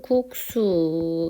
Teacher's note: 시옷이 쌍시옷으로 이렇게 바뀌었어요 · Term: 된소리